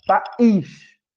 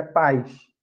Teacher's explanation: esse I aqui, ele não tem força suficiente para produzir uma sílaba sozinha, para ser uma vogal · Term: semivogal